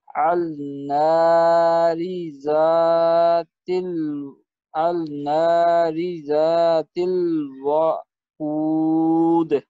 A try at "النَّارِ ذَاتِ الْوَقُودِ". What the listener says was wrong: اب یہ اب آپ نے نا واو کو تھوڑا لمبا کر دیا. وہ ایک حرکت ہے نا اس کے اوپر زبر ہے تو یہ ہوگا النار ذات الوقود.